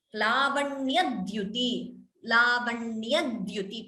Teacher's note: please note the ditvam there second d is heard